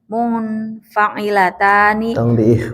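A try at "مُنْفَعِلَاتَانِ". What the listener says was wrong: tong di ikhfa, ikhfa ya. Mun saja.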